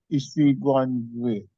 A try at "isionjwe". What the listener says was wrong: No, there's no Isigo. It is Isionjwe.